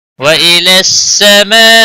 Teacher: بڑی مد ہے 5 الف کے برابر کھینچ کر پڑھیں گے